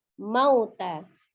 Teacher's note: mau madlin juga waw sukun sebelumnya fathah diwasol, maka dia pendek.